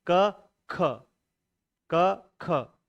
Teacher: पहले के साथ में सामान्य बोलिए, दूसरे थोड़ा हल्का सा ह जोड़िए आप, ह ऐसे क ख ह, क ह ऐसे नहीं जोड़ना है, क ख, क ख, यही जुड़ेगा इसमें। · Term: महाप्राण